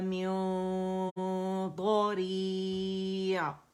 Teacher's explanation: آپ نے ضاد جو ہے اس کے مخرج کے قریب چلے جانا ہے، ٹچ نہیں کرنا، لیکن غنہ ریٹین کرتے ہوئے یاد رکھیے گا. نون چھپائیں گے تو غنہ، ٹھیک ہے، پروڈیوس ہوگا، ریٹین کریں گے اسے. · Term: اخفاء